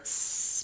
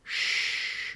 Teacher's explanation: s, my tongue is forward, and then sh, my tongue is further back. The back of my tongue is more lifted, and my lips might be a little bit rounded.